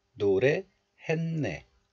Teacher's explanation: The final consonant sangsiot of this letter belongs to digit group, D group. But also, the final consonant sangsiot is followed by the nasal sound niun of the next letter. So the final consonant sangsiot becomes nasalized into niun sound, N sound. So het becomes hen.